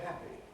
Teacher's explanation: then switches on again for the final vowel and b so the voicing is off on off on